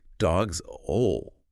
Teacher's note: You have that Z sound from the plurals right before the ol.